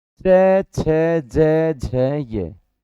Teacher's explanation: इसका उच्चारण तालू के स्पर्श द्वारा होता है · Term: च वर्ग